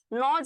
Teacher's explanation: তুমি যখন উচ্চারণ করবা তুমি দেখবা যে বাতাসটা তোমার নাক দিয়ে বের হয়ে যাচ্ছে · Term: নাসিক্য ধ্বনি